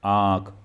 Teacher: जैसे आंख बोला आंख तो ऊपर चंद्र बिंदी है ना तो इसमें दोनों यानी यानी कि अनुनासिक यानी कि वायु जो है नाक और मुंह दोनों से निकल रही है